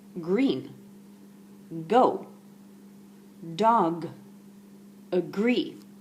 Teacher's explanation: So if I wanted to draw a diagram of a head, I would show you here on the map that the G sound is at the back of the throat. It's your tongue going against your soft palate, and it's voiced. So it's not at the front, it's at the back.